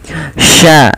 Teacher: Posisi makhraj huruf syin adalah di tengah lidah kita sya dan dia memiliki sifat tafasyi intisyarus ya menyebarnya suara di dalam mulut kita.